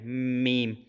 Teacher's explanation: آپ کے ہونٹ کمپلیٹ طور پہ بند ہوں گے اور باہر والے جو خشک حصے ہیں وہاں سے آپ کو یہ میم کی آواز آئے گی